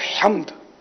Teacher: हा हल्क से निकलेगा · मेमन बिरादरी, गुजराती बिरादरी खास करो हम्द की जगह हमद पढ़ते हैं, तो हमद अगर पढ़ेंगे ना तो माना बिल्कुल बदल जाएंगे।